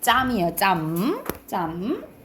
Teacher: 끝 소리는 울림 소리면서 입술에서 나니까 미음해야겠어. 그래서 짬으로 바꾸시면 돼요.